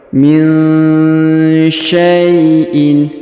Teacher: Perhatikan nun sukun bertemu sya. Nun sukun bertemu sya maka didengungkan dan disamarkan